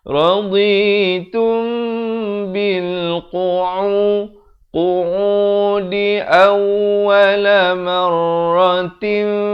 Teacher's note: Di sini ikhfa syafawi, mim mati bertemu ba. Mim mati bertemu ba dibacakan dengan dua harakat